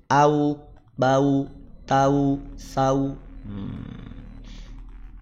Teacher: Waw ba mim. Nah, waw itu dari bibir. Makanya ketika dia fathah, dia kasroh, dia dhammah ataupun saat sukun akan bergerak, akan monyong